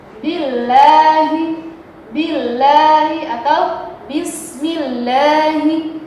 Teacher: Tipis. Lafaz Allah dibaca tipis karena didahului oleh harokat kasrah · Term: tarqiq